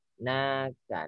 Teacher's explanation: Na panjang 2 ketuk.